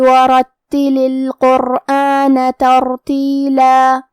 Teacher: تا پہ تشدید ہے تو ہم 2 حرف کے برابر حرف تا کو پڑھیں گے · را پہ زبر ہے تو را کا حکم ہے تفخیم، ہمیں حرف را کو موٹی آواز میں پڑھنا ہے